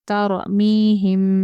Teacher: را ساکن سے پہلے زبر ہے اس لیے را کو پر پڑھیں گے